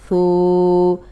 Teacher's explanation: اب یہ نرم حرف ہے، اس میں سیٹی کی آواز نہیں آنی چاہیے۔ اوپر سامنے کے جو دو دانت ہیں ان کے کنارے پہ زبان رکھ کے ادا کریں تو سیٹی کی آواز نہیں آئے گی۔